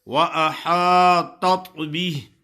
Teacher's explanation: تا پہلا تا موٹا ہے اور دوسرا باریک ہے ، اور یہ ہا ہے، ہا کچھ لوگ پڑھتے ہیں وَأَحَاطَتْ